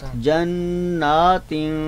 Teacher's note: तो ता हरफ के आने पर हम इस तनवीन पर जो है वो नून पर क्या करेंगे? इख्फा करेंगे, यानी गुन्ना के साथ पढ़ेंगे।